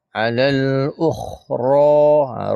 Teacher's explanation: ra dia alif kecil, dua harakat panjang dia.